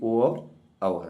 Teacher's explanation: उसका उच्चारण स्थान व से होता है। और का जिसका कंठ और ओठ से उच्चारण स्थान होता है दोनों के समान रूप से मिलने से होता है उसे कंठोष्ठ बोलते हैं।